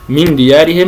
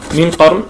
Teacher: من ديارهم مرققه بينما من قرن مفخمه